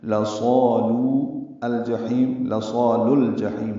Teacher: لام کو الجحیم کے لام سے ملا دیں گے، لصالو الجحیم، لصال الجحیم ہو جائے گا۔